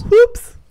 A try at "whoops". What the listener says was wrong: Whoops. Way to pronounce both the W and the H in that word.